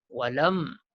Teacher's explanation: Nama hukum kat sini izhar syafawi. Izhar ni menzahirkan jelas dan terang kita sebut huruf mim mati ni. Tidak ada dengung. Sebut jelas-jelas.